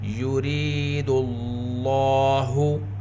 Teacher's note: لفظ اللہ کے لام سے پہلے پیش ہے، لفظ اللہ کے لام کو پر پڑھیں گے اور 2 حرکت کے برابر کھینچ کر پڑھیں گے کیونکہ لام کے اوپر کھڑا زبر ہے۔